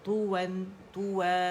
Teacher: complete rolling ہوگی lips کی